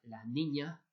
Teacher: la aspiración de la s al final de la palabra